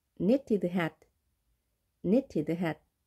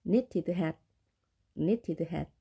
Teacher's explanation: N 앞에 K는 발음이 되지 않습니다.